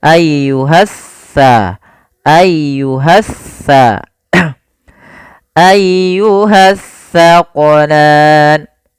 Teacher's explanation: Yang mana kalau tsa ujung lidah kita wajib menempel dengan gigi seri depan. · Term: huruf tsa